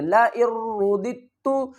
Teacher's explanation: لَئِن رُدِدتُّ، لَئِن رُدِدتُّ، اس دال کو نہیں، رُدِدتُّ نہیں پڑھیں گے، اس کو پڑھیں گے رُدِدتُّ، تا کے اوپر پیش ہے اور تا کے اوپر سختی بھی کریں گے، را کو پر پڑھیں گے